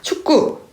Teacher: 받침, 기역 뒤에 나오는 기역이기 때문에 두음 법칙이 아니라 된소리 되기에 의해서 축구가 되는 겁니다